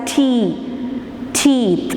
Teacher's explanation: We block the air inside the mouth using the tip of the tongue against the alveola and then release it, and we produce the sound t, t and d. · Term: alveolar plosives